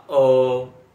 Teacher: ये अ का उच्चारण कंठ से होता है